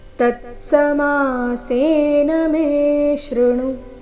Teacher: ತತ್ಸಮಾಸೇನ ಮೇ ದೀರ್ಘ ಮುಂದೆ ಶೃಣು ಎರಡು ಅಕ್ಷರಗಳು ರಸ್ವ